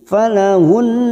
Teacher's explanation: nun yang bertasdid gunnah musaddadah ditekan selama 3 harokat dengung